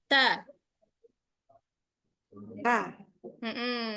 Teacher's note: Ujung lidah kita ke pangkal gigi seri atas. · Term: huruf ta